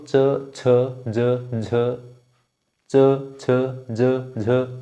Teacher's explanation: जब जहाँ पर हमारी जीभ टच कर रही है, च हमारी जीभ ऊपर तालु में टच कर रही है · ये सारे के सारे हम एक तरह से बोल रहे हैं, इसलिए इनका उच्चारण स्थान तालु है